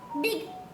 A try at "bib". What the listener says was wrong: गा नहीं, बा है ना, बिब। हाँ तो IB इब हुआ, तो BIB बिब।